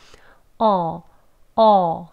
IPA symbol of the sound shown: ɔː